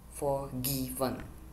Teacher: Forgiven has three syllables, and the stress syllable is in gi